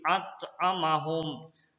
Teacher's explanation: Pantulannya ada tapi kecil. At'amahum. Beda dengan qalqalah kubra. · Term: qalqalah sugra